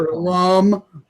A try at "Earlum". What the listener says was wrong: I think it's Earlum. The P is silent. Earlum. The P is silent. P is silent.